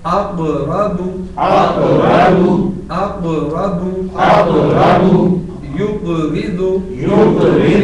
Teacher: چونکہ یہ دونوں جگہ پر سائلنٹ ہے، قاف جزم کے ساتھ ہے، ساکن ہے تو یہاں قلقلہ بھی آئے گا